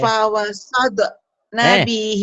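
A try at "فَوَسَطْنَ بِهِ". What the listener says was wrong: Jangan pawasad, pawasalto. Itu kan di rumah kita, di rumah kita banyak apa tuh alat-alat toto ya, bukan tata kan, bukan dada, fawasalpo, nabihi, nanya pendek. Nanya pendek. Bandel ya, nanya pendek.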